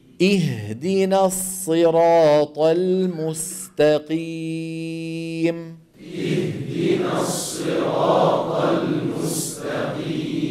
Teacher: على كسر الهمزه كسرا كاملا